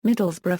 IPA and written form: ˈmɪdəlzbrə (Middlesbrough)